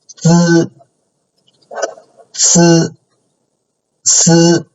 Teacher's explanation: For zi, ci, si, we use the tip of the tongue to make it against the upper front part of the mouth.